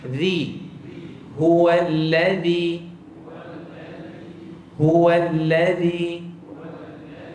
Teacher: lidah akan keluar sikit menyentuh hujung gigi atas jadi sebut Z keluarkan lidah sikit kalau tak keluar lidah dia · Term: huruf dalal